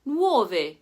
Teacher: the diphthong OU, as in nuove, meaning new, where the U is like the W sound